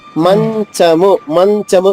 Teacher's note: మంచము చ అన్య చ రెండు ఒకే ఆ స్థానంలో వస్తాయి